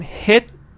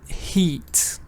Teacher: when I'm saying hit, I'm not really saying a long E. But when I'm saying heat, I am saying a long E.